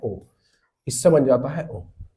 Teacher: रहा है ओष्ठ से बोला जा रहा है तो कंठ ओष कंठ ओष्ठ से जो मिलकर बनता है उसको बोलते हैं ओ